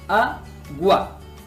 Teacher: U-A, cerrada más abierta, por lo tanto es diptongo